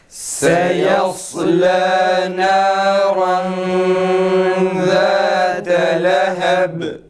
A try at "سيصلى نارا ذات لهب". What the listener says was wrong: Ba harfi şeddeli gibi çıkmasın yalnız. سيصلى نارا ذات لهب. Bu kelimeye dikkat edelim. Sad kalın, sin ince, lam yine ince okunması gerekir arkadaşlar. Bir de sadda acele etmeyelim.